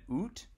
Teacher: out was pronounced with an ooh vowel so that would have been UT and it became out which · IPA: /u:/